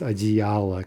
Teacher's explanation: Adiyala, right, three syllables with the stress in the middle, that's probably going to stay put